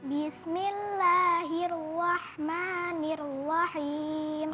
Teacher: Fathah disempurnakan fathahnya. Ya, jangan kemudian ada kemiringan ke huruf dhammah. Ya, nanti tidak sempurna fathahnya.